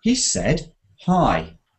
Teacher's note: listen to the said it goes up he said hi if I turn it around hi he said · He said, and listen to the said, it goes up.